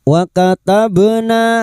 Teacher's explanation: bak sukun yang mati asli di tengah kalimat qalqalah sugro, jangan lupa dipantulkan